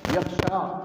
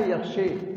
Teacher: آپ غور کیجئے کہ فتحہ امالہ اور تقلیل، فتحہ ہے یخشا اور امالہ ہے یخشے، اور ان دونوں کے درمیان تقلیل ہے یخشے